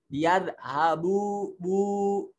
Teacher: دونوں ہونٹ ہمارے کھلے ہوئے ہیں لیکن گول ہیں، کیونکہ پیش اور واو کی ادائیگی کے وقت ہونٹوں کو گول کیا جاتا ہے